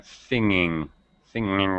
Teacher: the tongue is far back in the throat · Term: no G sound